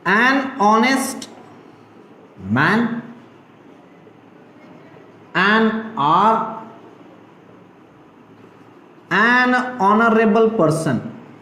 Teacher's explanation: the sound of H is silent